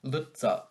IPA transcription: 'lət'sɶ